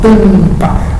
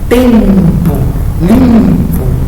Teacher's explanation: O A e o N sai um som só da minha boca. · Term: dígrafo